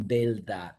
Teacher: at the end of the syllable for single R, which is change into an L sound